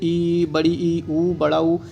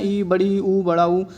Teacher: संवृत्त स्वर में मुंह ज़्यादा खुलता ही नहीं है